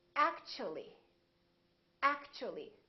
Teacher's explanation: So the T and U create a new sound, and it sounds kind of like ch. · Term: CH sound